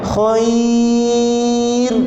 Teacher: Ra tu nipis, jangan digulungkan lidah tu. Jangan ditebalkan ra tu, moncongkan bibir, jangan. · Sebab di sini kita mesti baca dengan tarqiq ra. Ra itu mesti dibaca dengan tarqiq, nipis.